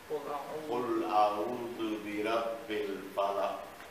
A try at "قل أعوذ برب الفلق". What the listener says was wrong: No qaf. At all. You didn't even pronounce the qaf at the end.